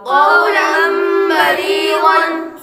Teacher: आगे लाम पर तनवीन है, तनवीन के बाद बा हरूफ लाम में से आ रहा है, तो इसलिए गुन्ना करके पढ़ेंगे। तनवीन को मीम से बदलकर इख्फा करें, यानी गुन्ना करके पढ़ेंगे।